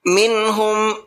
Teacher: ہا اظہار کے حرفوں میں سے ہے، نون ساکن کے بعد میں اظہار کے حرفوں میں سے کوئی بھی حرف آ جاتا ہے تو وہاں نون ساکن کی آواز کو ظاہر کر کے پڑھتے ہیں